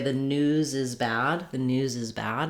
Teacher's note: i'm really going to hear that z sound as i link